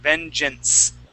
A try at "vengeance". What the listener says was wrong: Okay, give me an S there at the end. Vengeance.